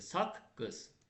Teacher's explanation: Məsələn, saq qız sözündə birinci q, bax, yazıram, s-a, birinci q özünün kar qarşılığı olan k-yə çevrildi.